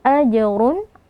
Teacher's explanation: kata hukumnya Qalqalah Sugra kita beri pantulan AJ ajrun ro dmatain kita angkat pangkal lidah karena dia tebal